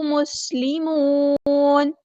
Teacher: الہا واحدا ونحن، نحنو نہیں پڑھنا، ونحنو، ہا کو وسطی حلق تھوڑا سا ادا کریں گے، نون کے پیش کو لمبا نہیں کریں گے، نحنو نہیں پڑھنا، ونحنو لہو مسلمون، سین کی سٹی ہم واضح کریں گے اور واو مد آیا تو مد اصلی کریں گے اور نون کو ہم ساکن کر دیں گے وقف کرتے ہوئے، اور یہاں پر مد عارض بھی ہوگی، 2 یا 4 یا 6 کاؤنٹ ہم نے اس کو لمبا کرنا ہے.